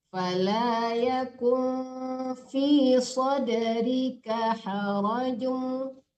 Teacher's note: agak harakatnya miring, jangan ditahan, jangan dipanjangkan ya. Fala yakum antara nun dan fa kita masuk ke kayak disamarkan ke fa itu berdengung juga ya